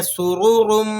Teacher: سین کو آپ نے سیٹی کے ساتھ ادا کرنا ہے۔ سرورم، دو رو ہیں، دونوں کے اوپر حرکات لگی ہوئی ہیں، تو آپ نے رو کو موٹا کر کے ادا کرنا ہے۔ رو کا قاعدہ ہے کہ اگر رو پر اوپر کی حرکات لگی ہوں تو رو موٹی ادا ہوتی ہے۔